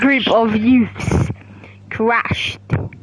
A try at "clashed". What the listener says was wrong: It's clashed. You said crashed, you idiot.